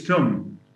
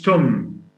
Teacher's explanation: Th is replaced by sa or ta.